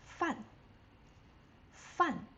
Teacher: it's the fourth tone. You have to go from your highest range to the lowest range fast.